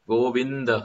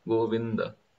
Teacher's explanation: Go is easy, the is easy, but vin is difficult because Govinda, there is a samyukta akshar, there is a combination syllable. Govinda, half na with a full da, Govinda.